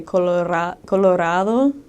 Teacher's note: In Spanish, a single R sounds even like a D. Like you'd say Colorado, just like you flip it.